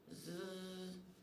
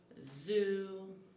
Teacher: Sixth fricative sound is z, which is a consonant that is voice continuous or voice cognate. The sound z is made with the tongue behind the teeth.